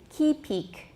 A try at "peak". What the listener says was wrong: don't put the stress on the second syllable keep the stress on the first syllable